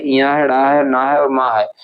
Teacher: अनुनासिक होते हैं। यानी कि नाक और मुंह दोनों से इनका उच्चारण होता है।